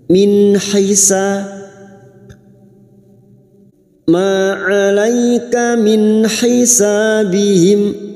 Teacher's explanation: Ma 'alaika alai fathah bertemu ya sukun kita gunakan 'alaika min nun sukun bertemu ha. Nun sukun dibaca jelas tanpa mendengung idhar halqi.